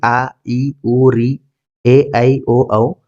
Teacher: दीर्घ स्वर है और इनके उच्चारण काल का दो मात्राओं का होता है